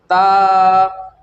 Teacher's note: ता ज़ुबान की नोक सनाया उलिया सामने के ऊपर के दो दांत जो होते हैं हमारे दो दांत की जड़ों में लगाने से ता अदा होता है।